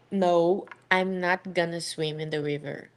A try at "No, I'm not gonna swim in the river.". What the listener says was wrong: Very nice.